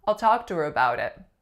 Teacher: the H goes away however in this case our vowel stays the same just slightly shortens